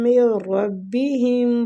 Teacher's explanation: نون ساکنہ کے بعد را ادغام بلا غنہ ہوگا